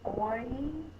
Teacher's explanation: It is making two sounds, oi, but we say it really fast, and it's considered a diphthong. It's considered one phoneme, so it goes in one box.